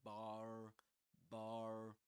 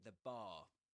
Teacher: In American English, usually you will pronounce the final R there. You will say bar.